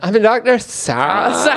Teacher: With a real vocal fry in it.